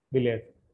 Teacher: first syllable is యాక్సెంటెడ్